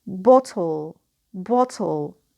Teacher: of one consonant which is tur and here in this case we have the nucleus composed not of a vowel not of a diphthong but of a syllabic consonant which is syllabic L